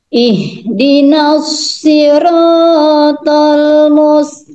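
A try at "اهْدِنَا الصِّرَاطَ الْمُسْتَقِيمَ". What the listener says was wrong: Kurang mengalir sinnya. Ihdinas sirat. Ihdinas siratal mus.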